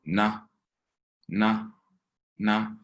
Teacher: we got to make sure to say in a low tone